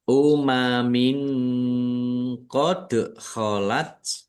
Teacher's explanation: Kasroh tanwin bertemu dengan huruf qaf, bacaan ikhfa, dibaca samar-samar. Dal sukun, bacaan qalqalah, dibaca memantul.